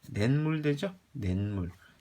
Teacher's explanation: 자, 발음했어요. 니은이 첨가돼요. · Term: 니은 첨가